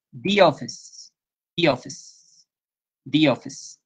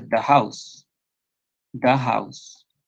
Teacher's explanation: generalmente cuando viene una palabra que comienza con sonido de vocal, como en office, que es oficina en inglés, office, ahí cambia un poquito a I, se cierra